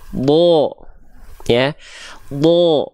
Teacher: Huruf dod termasuk ke dalam huruf yang tebal. Ketika huruf dod berharokat fathah, dia tidak akan dibaca terdengar seperti vokal A, tapi dia akan terdengar seperti vokal O.